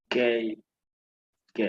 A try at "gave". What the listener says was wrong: Ajá, gave, ¿no? Con esa V al final. Y la E siempre va a ser muda, ¿no? Give, gave.